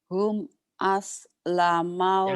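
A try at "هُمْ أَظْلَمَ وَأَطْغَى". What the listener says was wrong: jangan jangan s tapi zo zo Rabbana zolamna zo jangan Rabbana solamna salat zo ya hum azlama. Hum azlama wa atagha.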